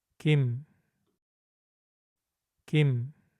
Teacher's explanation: Since M comes at the end, we start with the gi sound and finish by closing the lips and vibrating the vocal cords, just like in English. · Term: final M sound